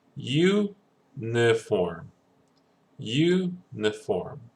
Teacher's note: So our emphasis is in the beginning.